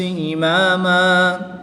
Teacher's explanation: نون مشدد میں غنہ کریں گے، 2 زبر کی تنوین کو وقف میں الف مدہ سے بدل کر پڑھیں گے۔